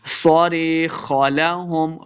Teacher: یہاں پہ یا مدہ ہے، اس کو 2 حرکات لمع کر کے پڑھنا ہے